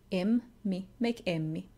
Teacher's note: Emmi is pretty close to the English name Emmy, just with a longer M sound. It might help you to picture it as two separate words, the first part being M, as in Aunt M, and the second Mi, as in Mickey.